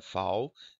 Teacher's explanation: Observe o L que virou aqui semivogal